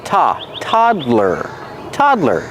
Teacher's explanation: The first syllable is the open a sound like hot and stop. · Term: open ah sound